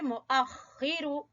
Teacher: خا ادنا حلق سے